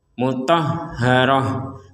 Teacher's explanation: kalau kita berhenti di tak marbutoh, maka tak marbutoh ini menjadi huruf ha